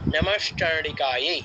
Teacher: নমশ্চণ্ডিকায় মানে বিসর্গটার জায়গায় তালব্যস্য এসেছে